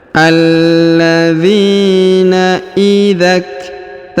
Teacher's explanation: huruf lu dipanjangkan 2 harokat karena di depannya terdapat waw sukun, sedangkan alifnya tidak dibaca atau tidak dianggap ya.